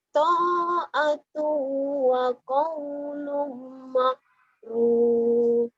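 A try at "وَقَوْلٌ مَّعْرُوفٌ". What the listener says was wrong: Jangan makrub, ma'ruf ya. Ma'ruf. Jangan makrub. Di Jawa makrub, ainnya ke ka. Jangan ma'ruf ya.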